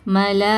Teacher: நாலுல இருந்து ஐந்து ஹரக்கத்தை நீட்டி ஓதணும். நீங்க வந்து மலான்னு சொல்லிட்டு வல்லினமா உச்சரிக்க கூடாது. மெல்லினமா உச்சரிக்கணும்.